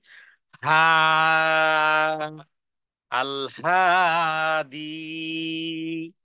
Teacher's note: একেবারে হলকের মানে মুখের প্রথম অংশ থেকে হা